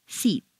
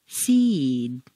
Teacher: unvoiced consonant when that you whisper tkf sh you'll notice that the preceding vowel is said quite quickly and on a single stair step · When you have a word ending in an unvoiced consonant, one that you whisper, t, k, s, x, f, sh, you'll notice that the preceding vowel is said quite quickly and on a single stair step. When a word ends in a vowel or a voiced consonant, one that you say, b, d, g, z, v, j, j, the preceding vowel is said more slowly and on a double stair step.